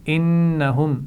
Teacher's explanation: نون پر شد ہے تو غنہ ہوگا